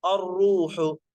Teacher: را پر پیش اس لیے موٹا پڑے